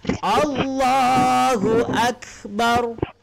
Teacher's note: Kalau tadi sifatnya qalqalah, jadi kalau kaf ini kita mati, dia ada angin, khamas.